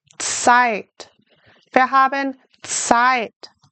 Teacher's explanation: how do we say Z in German? Like a TS.